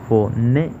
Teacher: en la palabra fonético, la sílaba tónica es la sílaba ne, porque es donde recae la mayor fuerza, la mayor intensidad.